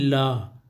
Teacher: जिसके उच्चारण में हवा जीभ के पास या बगल से निकल जाए तो वह होता है आपका पार्श्विक